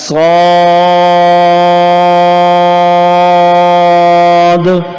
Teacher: اس میں ہونٹوں کو گول نہیں کریں گے اور آخر میں دال پر قلقلہ کریں گے